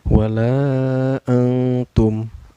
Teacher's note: Wala antum, ini ada ikhfa ya, karena ada nun sukun bertemu dengan huruf ikhfa yaitu ta ya. Cara bacanya samar sambil dengung ya. · cara bacanya dipanjangkan Boleh empat harakat atau lima harkatnya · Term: Mad Jaiz munfasil